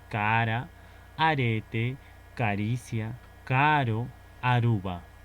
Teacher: este sonido vibrante simple este es va a ser un sonido suave